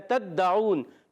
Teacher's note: تا کو دال سے ملائیں گے، دال مشدد ذرا رک کر ادا کریں گے، اور پھر عون میں عین کی ادائیگی حلق کے درمیان والے حصے سے، اور وف کریں گے تو ہو جائے گا مد عارض۔